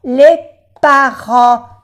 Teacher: acuérdense de las vocales nasales, en. La T no se pronuncia y la S es de plural.